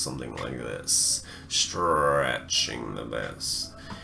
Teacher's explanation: like this stretching the best I'm pulling my vocal course across I'm letting the air linger in there longer allowing it to build and kind of rasp and stretch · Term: raspy voices